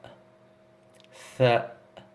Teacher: Donc, si vous préférez les dents de devant, eh bien, vous allez loger le bout de votre langue entre les incisives supérieures et inférieures. Et c'est le souffle qui va passer, qui va induire le son donc, de la lettre tha.